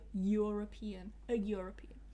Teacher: even though it begins with an E, it begins with a vowel letter, it actually starts with a y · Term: y sound